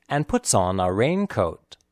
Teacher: puts and raincoat are clearly pronounced and on and a are not